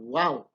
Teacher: huruf Waw makhrajnya berada di bibir